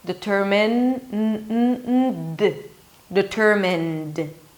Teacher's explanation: I can feel my vocal cords vibrating as I'm pronouncing the N.